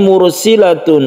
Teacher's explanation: ada ro sukun yang sebelumnya ada dhamma, ini kita sebut dengan ro yang tafkhim